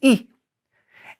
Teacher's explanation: Now, if you look in parentheses, there's a symbol, and that I is actually pronounced E. The French E is a very tight E. It doesn't have a glide. It's not E, it's E.